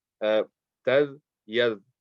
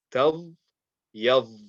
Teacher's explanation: And the only way to make that difference is the dal is so light, very, very light letter, that the tongue just basically rolls off the teeth. Tad, yad, very, very soft, very light.